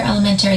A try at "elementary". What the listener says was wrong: Stop saying elementary. That's not how it's said. Elementary. Put the emphasis on the wrong syllable. It's elementary.